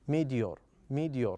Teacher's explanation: we have t here uh but we pronounce it as da